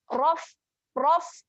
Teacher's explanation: makhrajnya ialah gigi atas. Gigi atas ni ataupun kita boleh katakan gigi kapak. Sini gigi kapak berjumpa dengan bibir bawah. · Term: huruf fa